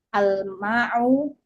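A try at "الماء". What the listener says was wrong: Al-ma'u. Jangan ada ainnya. Tadi huruf hamzah seperti ain.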